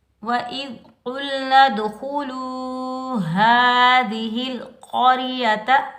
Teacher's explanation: ذال پر ہم سیٹی کی آواز نہیں نکالیں گے، بغیر کھینچے پڑھیں گے۔ قاف حروف مستعلیٰ میں سے آ رہا ہے تو قاف کو ہم موٹا پڑھیں گے، قاف کے اوپر پیش، قاف کو ہم لام ساکن کے ساتھ ملائیں گے، بغیر کھینچے پڑھیں گے۔